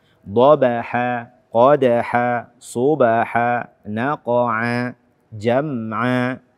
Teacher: akhir setiap ayatnya adalah mad iwad. Mad iwad yang panjangnya 2 harakat.